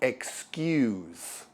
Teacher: To excuse is a verb that means to defend or justify something, or to release something. Notice that the S actually sounds like a Z.